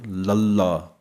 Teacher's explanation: ਜਦੋਂ ਅਸੀਂ 35 ਅੱਖਰਾਂ ਵਾਲਾ ਲਲਾ ਬੋਲਦੇ ਹਾਂ ਤਾਂ ਤਾਲੂ ਦੇ ਅਗਲੇ ਪਾਸੇ ਲੱਗਦੀ ਹੈ ਜੁਬਾਨ